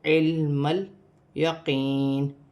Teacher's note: لام ساکن ہے، لام کو عین کے ساتھ ملا کر پڑھا جائے گا، پھر اس میم کو لام کے ساتھ ملا کر پڑھا جائے گا، علم الیقین۔